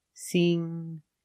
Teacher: With the combination of ing, we use the long E sound, like green beans. Sing, and the ng makes a sound in your nose.